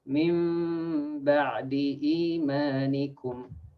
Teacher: You change, flip, iqlab the nun sakina or the tanween to a meme.